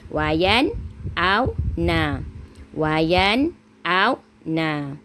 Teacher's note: Jadi menunjukkan dia satu kalimah. Nun sakinah bertemu dengan amzah. Kita kena baca dengan jelas, tak ada dengung. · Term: izhar halki